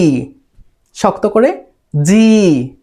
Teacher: জিহ্বার মধ্যভাগ উপরে তালুতে জি।